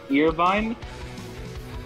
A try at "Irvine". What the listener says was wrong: That is not, that is fucking wrong as hell, dude. Bro, I just said the E is silent.